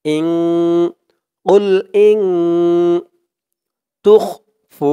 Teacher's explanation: ইকফা গুন্না হবে, নুন সাকিনের পরে ইকফার 15 হরফের এক হরফ তা আসছে